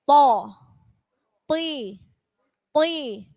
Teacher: Bukan ti. Jadi ujung lidahnya nggak pakai digigit kalau tok. Beda dengan ti.